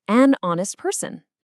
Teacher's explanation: The H is silent. The first sound is O as in honest.